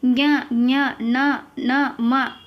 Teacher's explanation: ಮೂಗಿನ ಸಹಾಯದಿಂದ ಉಚ್ಚರಿಸಲು ಪಡುವ ಅಕ್ಷರಗಳಿಗೆ ಅನುನಾಸಿಕಗಳು ಅಂತ ಕರೀತೀವಿ ಇದು ಐದನೆಯ ಸಾಲಿನಲ್ಲಿ ಬರ್ತಕ್ಕಂತದ್ದು ಜ್ಞ ಞ ನ ಮ ಇವು ಮೂಗಿನಿಂದಾನೆ ಬರ್ತವೆ